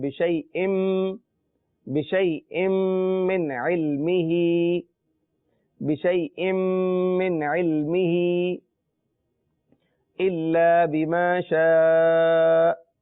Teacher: آخر میں حمزہ لہذا تھوڑا سا جھٹکا ہوگا، اور شین کے اوپر دیکھیں آپ مد ہے تو کھینچ کے پڑھیں گے